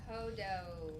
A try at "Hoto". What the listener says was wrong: Uh-huh. With a T. Hoto.